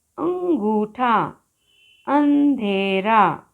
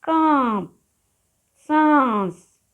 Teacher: इसकी ध्वनि यानी स्वर का उच्चारण मुख और नासिका दोनों से किया जाता है यानी कि बोलते समय हवा नाक और मुंह दोनों से बाहर निकलती है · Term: अनुनासिक